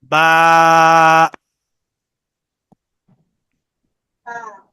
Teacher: দুই ঠোঁটের ভিজা জায়গা হইতে বা উচ্চারিত হয়। তা আমাদের দুই ঠোঁটের যে ভিজা অংশটা আছে ভিতরের, সেই দুইটা থেকে বা উচ্চারিত হবে।